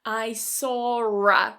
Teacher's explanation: This is an intrusive R, this is something that typically happens with British English speakers